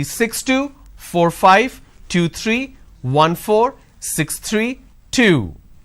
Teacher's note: The moment I drop my tone, that means it's the end of the series.